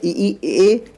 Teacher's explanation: अग्र स्वर का अर्थ होता है ऐसे स्वर जो जीभ के अगले भाग से बोले जाएं